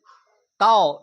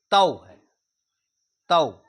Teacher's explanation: आय और औ यह दोनों संयुक्त स्वर कहलाते हैं। यह दो स्वरों के मेल से बनकर बनते हैं। इसलिए इनका उच्चारण औ और आई होता है।